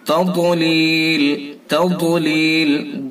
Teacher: تَضْلِيل، تَضْلِيل، ضاد کو پر کر کے پڑھیں گے۔ ضاد کا مخرج زبان کی کروٹ اوپر کی ڈاڑوں کی جڑ سے